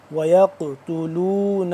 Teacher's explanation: قاف موٹا کر کے پڑھیں گے، اور دوسرا یہ قاف کیونکہ ساکن ہو رہا ہے اس کو ہم قلقلہ کریں گے